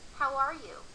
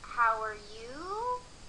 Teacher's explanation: could you hear my voice go down on you at the end